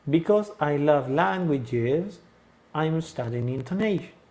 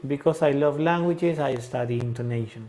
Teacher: Languages, el tono va hacia arriba y hago mi pausa, ¿no? Y después digo I'm studying intonation y ahí bajo mi tono, ¿sí?